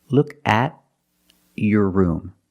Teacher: If I separate the words, the T is a stop T because it's after a vowel.